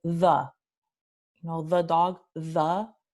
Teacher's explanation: Esta vocal se llama una vocal reducida porque no tiene ninguna tensión. La boca está en su posición más neutral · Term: schwa